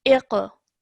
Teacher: This over here, again, qaf with the sukoon. So when you join the alif to the qaf, you need to do so with a bounce off the qaf. Okay, iq. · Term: qalqala